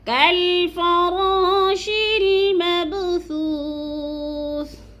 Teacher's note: ادھر تھوڑا سا قلقلہ کرنا ہے با کے اوپر کیونکہ با حروف قلقلہ میں سے ہے اور اس کو ہلا کر پڑھنا ہے۔